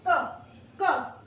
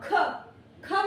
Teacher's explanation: क इसमें वायु कम निकल रही है और ख में वायु ज्यादा निकल रही है, दैट मीन्स ये महाप्राण है।